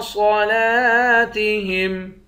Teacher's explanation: صاد کو موٹا پڑھیں گے، لام کے بعد الف ہے، الف حروف مدہ ہے، ایک الف کے مقدار کھینچیں گے · لام پر کھڑا زبر ہے، کھڑے زبر کو ایک الف کے مقدار کھینچ کر پڑھتے ہیں